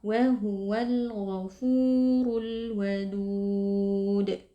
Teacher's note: Sehingga di sini berlaku hukum mad adid li sukun, boleh dibaca panjang 2, 4, atau 6 harokat. Dan karena huruf terakhir yang diwakafkan adalah huruf dal, maka berlaku hukum qalqalah kubra, sehingga bunyi huruf dal sukun kita pantulkan